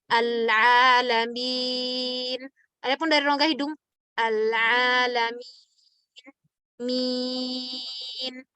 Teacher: ketika kita membaca mie itu suaranya harus keluar dari rongga mulut bukan dari hidung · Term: huruf rongga mulut